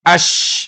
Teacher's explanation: Itu beda lagi kalau sin kecil, as, oh melibatkan gigi, as. Tapi kalau ash itu desahnya lebih lebih kuat.